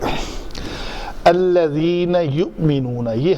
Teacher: वाला होगा यह ल सही है अय हमजा जब साकन हो जिस हमजा के ऊपर सुकून आए उसको जरा झटके से पढ़ते हैं